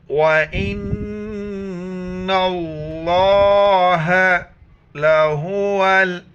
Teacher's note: واو زور و، حمزہ نون زیر ان، لفظ اللہ سے پہلے نون کے اوپر زبر ہے تو لفظ اللہ کو ہم موٹا کر کے پڑھیں گے۔